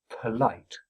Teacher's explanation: with of course a stress pulse on the second syllable. So you get "p.l" "p.l" "p.lite" And the word will come out as it should do.